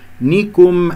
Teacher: النون مكسورة والكاف مضمومة ولا تفخم الكافات